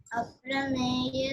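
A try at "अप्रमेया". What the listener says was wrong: It is aprameya. We have to extend it.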